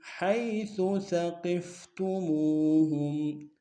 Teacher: حیث میں یا لین ہے بغیر کھینچے پڑیں گے